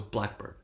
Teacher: black receives primary stress and bird receives secondary stress